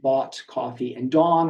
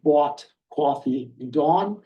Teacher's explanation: some of the features that are especially distinctive are raised thought vowels